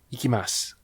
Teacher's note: It's like when you say ikimasu. You're not really even pronouncing the U. It is a su syllable, but you don't do that.